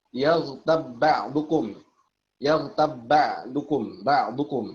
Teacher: Dua ba bertemu yang sama makhraj dan sama sifat. Makhraj ba sama-sama dari asyafatain, ya, dari dua bibir. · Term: idgham mutamathilan